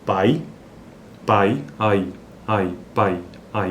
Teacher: Veja que esse i ele é mais fraco, então, porque ele é semivogal, por isso que ele é um decrescente. E o a é que se sobressai nesse caso: pai, gaita, gaita, ai, aita, seita, ei, eita. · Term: ditongos decrescentes